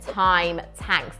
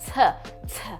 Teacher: there is Dental plosive alliteration in time tanks that t t and creates this violent tone